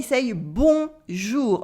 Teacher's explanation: in your nasal sound the n part completely disappear it's not there for example we say bon jou not bon